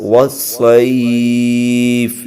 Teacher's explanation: یہاں مد لین عارض ہو رہا ہے تو اس کو کھینچ کے پڑھیں گے ایک دو تین الف تک